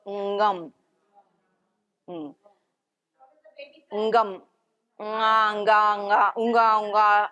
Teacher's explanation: the na sound comes from the roof and also the ga